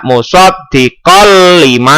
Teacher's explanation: idgham bilagunnah itu dimasukkan tanpa berdengung